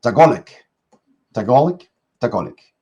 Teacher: Usually emphasis on the second syllable.